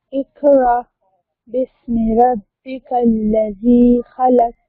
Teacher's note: जाल को सॉफ्टली अदा करें, हरूफ लिस्सिया है। रब्बिकल्लज़ी, जाल और जा में फर्क होता है।